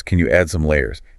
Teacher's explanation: remember this is a question so that Rising intonation at the end is going to be important